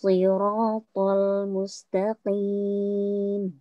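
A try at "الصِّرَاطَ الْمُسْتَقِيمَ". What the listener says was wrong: Ya, sudah bagus.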